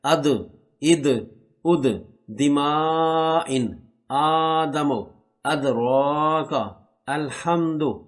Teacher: یہ دال حروف کلکلہ میں سے ہے، یہاں پر کلکلہ بھی کریں۔